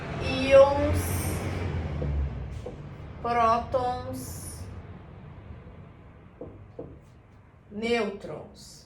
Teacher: Penúltima sílaba mais forte, penúltima sílaba tônica. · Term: paroxítonas